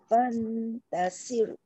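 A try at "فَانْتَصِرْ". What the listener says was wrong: Bonda tengok cermin ataupun handphone tu eh. Sebab nampak kita punya sebutan tu macam dah tebal. Tapi keadaan mulut kita jadi macam ni. Sir. Menyebabkan sok tu jadi sin.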